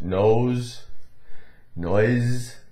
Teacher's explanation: S in those words, nose, noise, had more of a little bit of a Z tinge to it